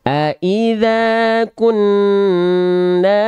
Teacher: karena saking kuatnya dia ketika kita mampetin hidung kita suaranya hilang karena kuat dia dominan suaranya betul-betul di hidung